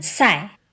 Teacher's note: an S that's pronounced with the tip of the tongue, right behind the lower teeth